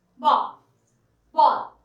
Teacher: इसके उच्चारण में आ और ओ, इन दोनों के मेल से इसका उच्चारण होता है। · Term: आगत स्वर